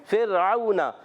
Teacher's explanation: ऊपर के दांतो के किनारे नीचे वाले होठ के तर से फ होता है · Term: फ का मखर